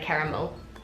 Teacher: We've definitely got a thing with our vowels, it's almost like the Es become Is almost so it's like cara-mill